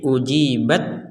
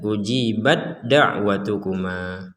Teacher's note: jadi ta dimasukkan ke dalam huruf Dal